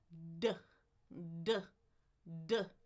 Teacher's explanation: my tongue is going to be on the bump on that ridge behind the teeth